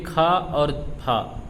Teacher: ये खा और फा ये ऊष्म और संघर्षी हैं। ये आ जाते हैं हमारे महाप्राण और आघोष में।